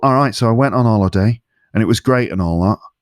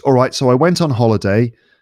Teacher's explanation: when I speak like Karl, the placement is a lot more nasal. · voice is quite nasal.